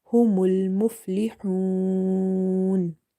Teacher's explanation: Ha is from the middle of the throat. Okay, and this is from the halkia letters, so we read it from the middle of the throat.